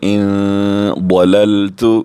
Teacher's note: ضاد حروف مستعلی میں سے ہم پر کر کے بھی پڑھیں گے